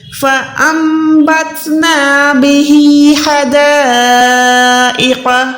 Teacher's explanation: نون کے بدلے میم کو ادا کرنا ہے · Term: گننا